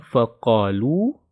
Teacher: Qa-nya yang panjang 2 harokat. Ini adalah mad tabi'i ya.